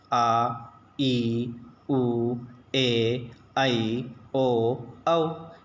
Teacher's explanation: जिन स्वरों के उच्चारण में ह्रस्व स्वर से दुगना समय लगता है उन्हें दीर्घ स्वर कहते हैं